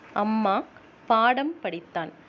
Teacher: குறுக்கம் மகரம் என்பது மெய்யெழுத்தான இம்மை குறிக்கும் அம்மா பாடம் படித்தான் ஆகியச் சொற்களில் மகர மெய்யெழுத்து தனக்குரிய அரை மாத்திரை அளவில் குறையாமல் முழுமையாக ஒலிக்கிறது